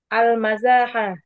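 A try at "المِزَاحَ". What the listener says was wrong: Mi. Miza tuh dibaca kasrah mimnya om. Mizah. Mizah. Mizah.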